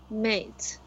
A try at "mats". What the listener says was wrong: Mats. It's a short A. Mats.